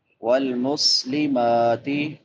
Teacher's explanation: میم کے اوپر کھڑی زبر ہے، ایک الف کے برابر لمبا کریں گے